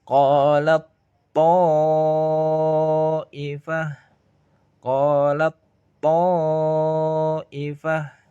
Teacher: Makhrajnya ujung lidah dan pangkal gigi atas. Kita membacanya tak sukunnya masuk ke to.